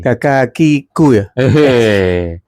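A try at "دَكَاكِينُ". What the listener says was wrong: Kafnya kok 3. Daka kinu. Kafnya 2.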